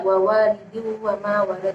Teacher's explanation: di situ ada kasrah tanwin bertemu dengan wawu, yakni disebut bacaan idgham bi gunnah ketika kasrah tanwin bertemu dengan huruf salah satu idgham bi gunnah, yaitu ya mim wawu, dan cara membacanya dimasukkan sambil berdengung. Dan juga di situ ada qalqalah kubra.